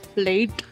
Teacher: Indians tend to emphasize the T at the end